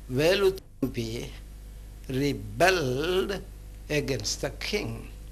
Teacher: if we place the stress on the second syllable, that is bell, then it becomes a verb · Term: word stress